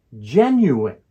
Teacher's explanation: the word genuine has three syllables the word stress is on the first syllable gen